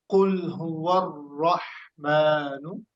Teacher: यहाँ पर ये जो कुल है, लाम पर हमने बाउंस नहीं करना।